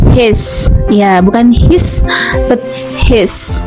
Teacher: And then I besar ya, dia itu agak condong ke E, tapi bukan E juga ya